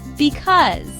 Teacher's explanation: Because. 2 syllables. Second syllable is stressed.